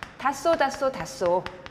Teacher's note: 받침 히읗 뒤에 시옷 나왔을 때 이 시옷을 쌍시옷으로 발음하는 거예요